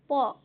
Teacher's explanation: আমাদের দুটো ঠোঁটের ওপর জোর দিতে হচ্ছে, তাই এইগুলি হলো ওষ্ঠ ব্যঞ্জন।